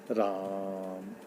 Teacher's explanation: राम में जो है तीन गुना समय लग रहा है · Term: प्लुत स्वर